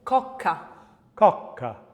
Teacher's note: we have the unvoiced plosive velar consonant, which is K